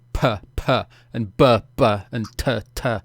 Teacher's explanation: the plosive sounds, where you expel sudden gusts of air, like if you're going puh, puh, and buh, buh, and tuh, tuh, that you don't get sudden wind noise in the microphone, or at least it gets massively reduced, because that can sound really bad.